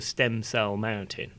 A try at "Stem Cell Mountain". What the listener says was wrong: No, but why are you putting the emphasis on cell? Stem cell mountain. stem cell mountain. Stem cell.